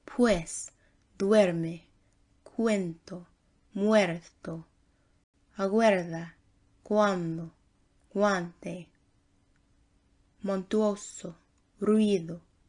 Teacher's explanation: In the diphthongs UA, UI, UE, UO, it sounds almost like a W.